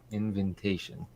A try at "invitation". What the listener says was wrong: You put too many N's in it.